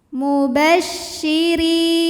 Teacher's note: maka cara bacanya tipis mubasyiri RI madnya adalah Mad Thobi'i zahiri sebab ada Ya Sukun didahului baris kasrah cara bacanya panjang · Huruf ra dibunyikan secara tarqiq sebab berbaris kasrah. Maka cara bacanya tipis.